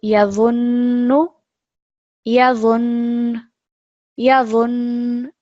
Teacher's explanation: you're still trying to make a nasal sound come through because this is a ghunna letter, noon and mim mushaddad especially.